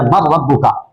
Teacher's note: اب تام دیکھیے، سمپل سی آپ کے سامنے مثال موجود ہے کہ مر ربک، کہ نون نہیں پڑھا جا رہا، کوئی صفت اس کی باقی نہیں ہے، نہ نون باقی ہے نہ اس کی صفت غنہ باقی ہے، اب را کی آواز آ رہی ہے مر ربک، تو یہ ادغام تام ہے.